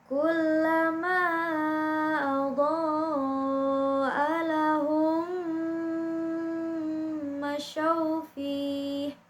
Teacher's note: jadi mimnya itu ditahannya sepanjang 2 harokat atau 3 harokat jadi itu didengungkan ya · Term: idgham mimi